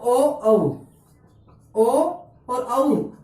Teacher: जिन वर्णों के उच्चारण करते समय श्वास वायु कंठ और औष्ठ दोनों को स्पर्श करके मुख से बाहर निकलती है उन्हें कंठोष्ठ वर्ण कहते हैं